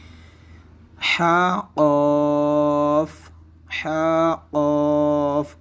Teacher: حا کو حلق کے درمیان سے، جبکہ قاف کو زبان کی جڑ اور تالو کے نرم حصے سے ادا کیا جائے گا، اور یہاں پہ حا کی مقدار 1 الف کے برابر ہے، اور جبکہ قاف کی مقدار 1 مد لازم یعنی 2 اڑائی الف کی مقدار کے برابر ہے۔